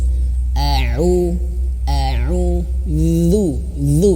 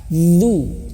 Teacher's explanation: Zu, dan ketika zu ya, ini sudah saya sering ingatkan ya. Lidah kita harus benar-benar menyentuh ujung gigi seri atas, ujung lidah menyentuh ujung gigi seri atas ya, atau digigit dan mengeluarkan suara zu, suara yang mengalir bukan nafas ya, suara zu.